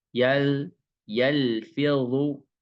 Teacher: cara membacanya, yal sedikit mengalir, tidak berhenti, dan tidak boleh ada pantulan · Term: tawasud